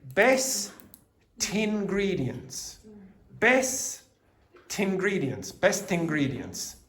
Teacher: It's definitely going to happen that if the next word begins with the vowel sound, like ingredients, and the last word preceding it has a consonant, you're going to hear the consonant. You can say best ingredients.